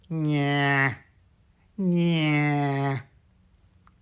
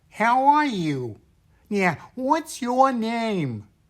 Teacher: the first voice is a very nasal sound a little bit like Bugs Bunny